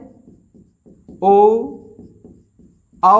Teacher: इसे हम लोग बोलते हैं ओष्ठ प्लस कंठ से